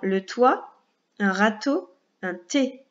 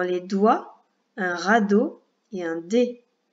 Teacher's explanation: le t, qui ne fait pas vibrer les cordes vocales, et le d, qui fait vibrer les cordes vocales. Sinon, la langue se met exactement au même endroit, juste derrière les dents de devant en haut, t, t, et le d également, sauf que les cordes vocales vibrent.